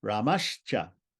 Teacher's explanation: the Visarga with any vowel preceding it changes to palatal S, sha